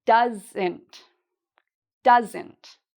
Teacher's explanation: Again, we have the "ent" and the stress is on the first part; you say that part louder and longer